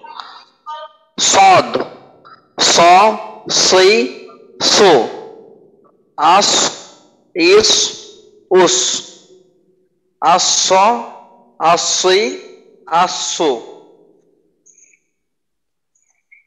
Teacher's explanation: আর সদের উচ্চারণে মোটার পরিমাণটা আরেকটু বাড়ানো দরকার। সদের উচ্চারণে সিনের থেকে পার্থক্য বোঝা যায়, কিন্তু মোটার অংশটা একেবারে কম হয়ে যাইতেছে। তো এই মোটাটা আর একটু বাড়ানোর চেষ্টা করবেন।